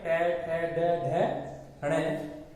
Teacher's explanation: इन वर्णों का उच्चारण करते समय जीवा मूर्धा का स्पर्श करती है। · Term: मूर्धन्य